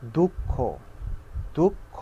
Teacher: দুঃখ, দুঃখ, এরকম, অর্থাৎ দ্বিত্ব। খটা দুইবার উচ্চারণ এবং জোর দিয়ে উচ্চারণ করা হয়